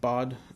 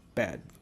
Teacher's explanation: In West Africa, bird sounds like bod, and in East Africa, the word bird sounds like bad.